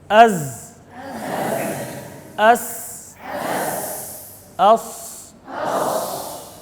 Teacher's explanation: ان حروف کو سیٹی والے حروف بھی کہتے ہیں کہ اس کے اندر سیٹی کی آواز پیدا ہوتی ہے